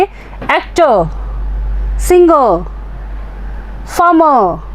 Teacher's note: pay attention to final R sound which is not spoken